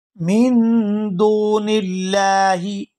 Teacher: यहाँ लफ्ज़ अल्लाह के लाम को बारीक अदा किया जाएगा क्योंकि लफ्ज़ अल्लाह के लाम से पहले ज़ेर है